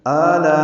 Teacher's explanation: میں آ میں مد بدل ہے، یہ 2 حرکات لمبا ہے، لا میں الف مدہ کے بعد حمزہ آنے کی وجہ سے مد متصل ہے، ہم اس کو 4 حرکات سے زیادہ لمبا کرتے ہیں۔